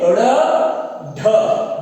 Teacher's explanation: जीभ है वो ऊपर तालु से और मूर्धा से टकराती हुई इसको बाहर फेंकती है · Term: उत्क्षिप्त व्यंजन